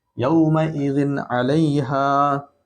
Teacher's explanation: यौमइज़िन अलैहा, तो जिन है, तनवीन है, यहाँ आइन है, तो गुन्ना नहीं करेंगे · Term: इजहार